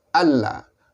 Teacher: Nun mati bertemu dengan lam, maka dia idgham, memasukkan bunyi nun ke dalam lam.